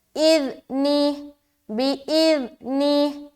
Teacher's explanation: ذال کو بہت ہی نرمی کے ساتھ ادا کرنا ہے، از نہیں بولنا اور ایج بھی نہیں کرنا. ٹھیک ہے، اذنی، بِإِذْنِهِ، نرمی کے ساتھ بغیر سیٹی کے ادا کریں گے.